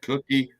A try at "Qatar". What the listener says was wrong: Qatar. Qatar. There's no U, you know? It's just QA. Cutter. There's no U. No ka. It's cutter. Pronounced cutter. Qatar.